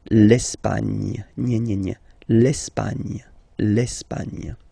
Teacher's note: don't insist on the final E because basically it's not pronounced